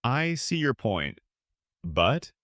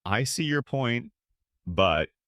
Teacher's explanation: Connect your point and let your tone fall slightly at the end. · falling intonation, calm and confident, downward pitch, calm, in control.